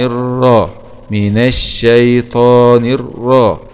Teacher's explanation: وحرف الراء هنا مفخم لأنه جاء مفتوح